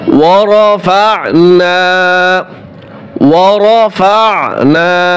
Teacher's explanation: আইন গলার ভিতরে চাপিয়ে দিতে হবে